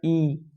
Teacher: बहुत थोड़ा सा मुंह खुला, यानी कि आपका लमसम लमसम बंद है मुंह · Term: समृद्ध